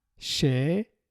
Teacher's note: the first one is a normal E and the second one is A. Şeker.